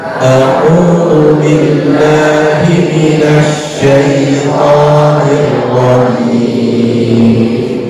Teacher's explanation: Tapi huruf roh ini mempunyai sifat itu la takrironna, tidak boleh terlalu banyak getarannya.